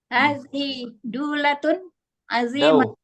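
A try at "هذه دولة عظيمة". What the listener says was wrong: Dau gitu. Dau, salah, bukan du. Ulangi, hadhihi.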